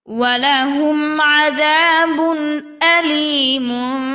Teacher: তানভিনের বামে হামজা অর্থাৎ ইজহার আমরা গুনাহ ছাড়া স্পর্শ করে তাড়াতাড়ি পড়ব